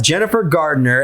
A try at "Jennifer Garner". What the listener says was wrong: Garner. Garner. There's no D.